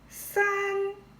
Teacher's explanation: Let's look at 3. 三, again, first tone, flat and high